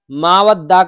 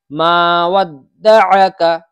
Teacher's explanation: دال کے بعد میں عین زبر ع بالکل صاف نکلنا چاہیے